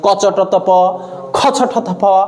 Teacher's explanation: এটা যে স্বরতন্ত্রী কম কাঁপে, ফলে এইগুলোকে বলা হয় অঘোষ ধ্বনি। অঘোষ। আর এই দুটো উচ্চারণ করতে গেলে আমাদের স্বরতন্ত্রী বেশি কাঁপে, ফলে এইগুলোকে বলা হয় ঘোষ ধ্বনি।